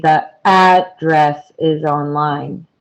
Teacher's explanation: When it is used as a noun, we stress the first syllable.